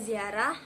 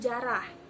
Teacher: kata-kata ziarah lazim diucapkan dalam bahasa Lampung yaitu jarah terlihat bunyi Z berubah menjadi J